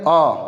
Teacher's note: तो अ देखेंगे ना तो हमारे कंठ पे प्रेशर लगता है, सीधे कंठ से आवाज आती है